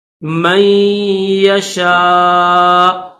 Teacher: حمزہ کے اوپر پیش ہے، اسٹاپ کریں گے تو جزم کے ساتھ پڑھیں گے، تھوڑا سا جھٹکا دیں گے